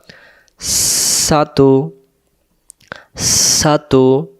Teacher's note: সামনের নিচের দাঁতের আগা থেকে শীষ দিয়ে পড়তে হয় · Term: সিন